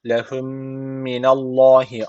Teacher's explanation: İdgam mistein var. Mimle yapılan idgam miste olduğu için bir elif tutmamız gerekiyor. · Allah lafzı kalın okunacak çünkü öncesindeki harf üstten bağlanıyor.